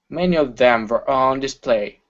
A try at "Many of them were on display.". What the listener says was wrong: Okay, give me a good W sound instead of ver. Ooh, many of them moo. Many of them were. Many of them were on display.